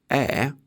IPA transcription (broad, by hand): ɛː